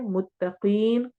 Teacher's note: मुत्तकीन कौफ को मोटा पढ़ना है और लंबा करना है